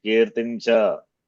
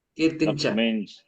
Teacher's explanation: you are replacing Anuswara by Parasavana, right?